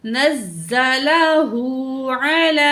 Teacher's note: आइन को निकाल के पढ़ेंगे, लाम के ऊपर खड़ी ज़बर है, दो अलिफ के बराबर खींचेंगे